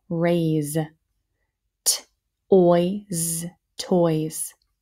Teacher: that s sounds like a z because of their vowel pair